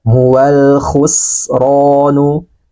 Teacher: Ada suara napas dan suara angin yang keluar.